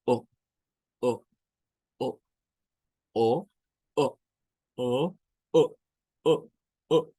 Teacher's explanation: Es un sonido en el cual lo que hacemos es detener en nuestra garganta el sonido y no hacerlo completo. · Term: glottal stops